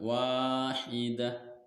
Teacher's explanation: Mad asli atau mad tabi'i karena huruf wawu berharokat fathah bertemu alif, setelahnya tidak bertemu dengan hamzah, sukun, waqaf, dan tasdid. Maka cara membacanya dipanjangkan wawunya yaitu 2 harokat